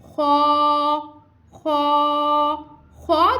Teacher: इसको हमने पुर यानी मोटा अदा करना है। खौ हरूफ मुस्तालिया का फर्स्ट लेटर है, इसको हम मोटा अदा कर रहे हैं। · खौ हल्क के ऊपर वाले हिस्से से अदा होगा। इसका मखरिज क्या है कि हल्क के ऊपर वाले हिस्से से खौ को अदा करेंगे।